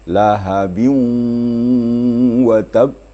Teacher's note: Lahabiu idgham ma'al gunnah, harus sengau ke hidung. Gunnah tu artinya melalui hidung.